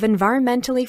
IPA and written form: ɪnˌvaɪərənˈmɛntli (environmentally)